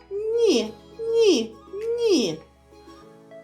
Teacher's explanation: Коли ми вимовляємо звук ні ні язичок торкається нижніх зубок